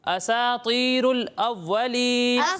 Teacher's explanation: سین کو باریک پڑھنا ہے، صرف طا کو پر پڑھنا ہے